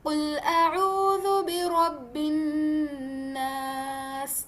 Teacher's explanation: तो यानी कि हमें जो नास लफ्ज़ है यहां पे जो नून तशदीद है इसे हमने दो काउंट्स तक नाक में घुमाना है। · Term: गुना